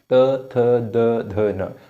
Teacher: इसके बाद जो त वर्ग है, त थ द ध न, इन पांचों वर्ण में हमारी जो जीभ है वो दांत को टच कर रही है